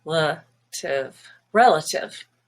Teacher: relative has a stress on the e the first syllable